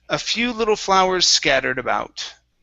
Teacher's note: let's practice flowers scattered. So combine those S sounds.